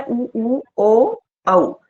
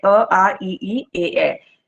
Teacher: गोलाकार हो जाएगी, वृत्त की तरह, जिसमें ओंठ बन जाएंगे, ओके। तो जो वृत्तमुखी है उनमें आता है उ ओ औ, और अवृतमुखी में आएंगे और जो भी है अ आ ई ए